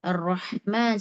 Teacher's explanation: Ar-Rahman sifat rakhawah mengalir sempurna hingga huruf berikutnya baru berhenti ya.